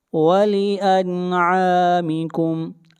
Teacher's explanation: یہاں پر نون ساکن کے بعد حروف حلقی میں سے عین ہے، اظہار حلقی ہوگا